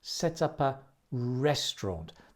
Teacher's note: Like many phrasal verbs, you can link set up, set up, set up, and also link the p and the a.